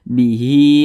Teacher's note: memiliki tanda baca kasrah berdiri maka huruf tersebut dibaca panjang nah ini dibaca panjang panjangnya dua harakat akan tetapi ini namanya adalah Mad sililah qasirah Nah karena ada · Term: Mad Silah qasirah